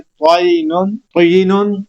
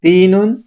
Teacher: طا خوب موٹا کرنا ہے، خوب بھاری آواز سے، پور آواز سے پڑھا جائے گا، اور تا نہایت باریک آواز سے پڑھیں گے تو ان کے مخرج کلیئر طور پر واضح ہو جائیں گے۔